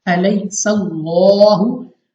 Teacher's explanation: या साकिन से पहले जबर या लीन जल्दी से पढ़ेंगे बगैर खींचे बगैर झटका दिए